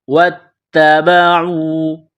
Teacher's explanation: وَاتَّبَعُوا، واو کو پڑھتے وقت ہونٹوں کو گول کرنا ہے، واو کو تا کے ساتھ ملانا ہے، تا کے اوپر تشدید ہے، تا میں سختی کرنی ہے